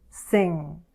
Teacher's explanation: we'll use the back of our tongue against the soft palate like we did with /k, g/ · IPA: /ŋ/